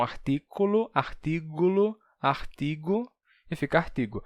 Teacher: Pegaram essa palavra, jogam no português como artículo, só que termina perdendo o L intervocálico e o K se torna G. Então, artículo, artígulo, artigo e fica artigo.